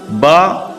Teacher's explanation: दोनों होठों के तर हिस्से से अदा होता है